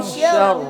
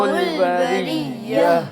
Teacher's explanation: شر کا را جو ہے اس کو موٹا پڑھیں گے، بریہ کا جو را ہے اس کو باریک پڑھیں گے